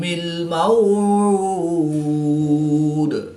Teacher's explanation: دال کی زیر کو وقف کی حالت میں ساکن کریں گے تو یہاں پر قلقلہ صغریٰ کر کے پڑھیں گے